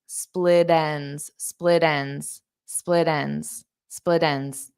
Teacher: So this T for split is between two vowels. So when I say it as one word, then I can turn that T into a soft D